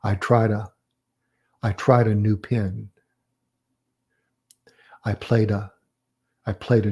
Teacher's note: that ah coming after a verb is going to be often connected to that verb